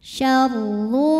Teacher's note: huruf ro dibunyikan secara tafkhim